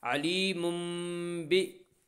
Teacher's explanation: تنوین کے بعد با ہے اس لیے تنوین کو میم سے بدل کر غنہ اور اخفا کے ساتھ پڑھیں گے اور اسے اقلاب کہتے ہیں۔ علیم بی ذال زبر